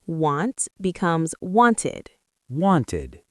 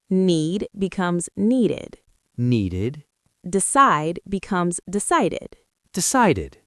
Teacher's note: You only say it aid, adding an extra syllable if the verb ends in a t or a d. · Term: ed d sound